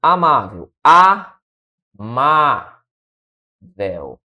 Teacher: E aí amável, a sílaba tônica é a penúltima. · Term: paroxítona